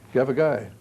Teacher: stress on the last syllable